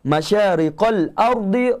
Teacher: Ra tu dibaca tebal. Walaupun ra tersebut bagi bawah.